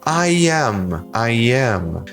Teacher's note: ele é um som de I, curto, seco, que serve em alguns momentos em início de palavra, mas também para conectar duas palavras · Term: som intrusivo de I